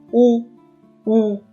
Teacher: उदाहरणार्थ पहा, उ, उ असं म्हणत असताना काय होतं, तर खालच्या आणि वरच्या ओठाच्या साह्याने हा वर्ण आपण उच्चारत असतो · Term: औष्ठ्य